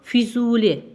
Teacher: Füzuli burda u uzanır